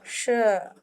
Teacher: श क्या है, सलगम वाला श, ये है तालव्य, जो हमारे तालु से बोला जाता है